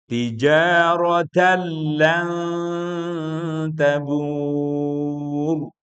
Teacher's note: Pasti nanti nunnya diakhiri dengan seperti mau baca ta tijarat tuh lan ta. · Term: ghunah, ikhfa